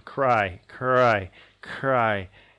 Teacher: Ooh, it's a diphthong, okay? It's a diphthong, but it is made not as a clear diphthong. It glides down